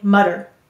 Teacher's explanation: if you just blend it quickly, you might not turn off your voice box for the t